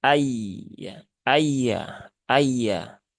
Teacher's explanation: ayya Tengah lidah di ee langit-langit depan Nah begini ya eah Tengah lidah langit-langit depan · Tengah lidah di langit-langit depan.